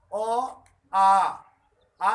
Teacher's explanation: आ बोलना है तो ज्यादा टाइम लग रहा है, अ के दुगुना टाइम लग रहा है। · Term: द्विमात्रिक